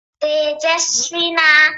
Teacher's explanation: व पर बड़ी ई की मात्रा बना दी थी लंबा नहीं खींचेंगे